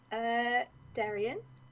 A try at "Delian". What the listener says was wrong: Delian. It's with an L. Delian.